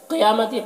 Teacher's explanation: قیامت قاف کو پر پڑھنا ہے، حروف مستعلیہ میں سے ہے، اور یا میں کھڑا زبر ہے، اسے 1 الف کے برابر کھینچ کر پڑھیں گے۔